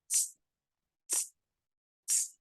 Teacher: el sonido de la s en inglés es como una especie de soplido de un silbido seco sin sonido